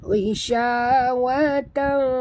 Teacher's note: kita sorokkan bunyi tanwin ke dalam fa disertai dengung. Ya, bunyi tan ini samar-samar.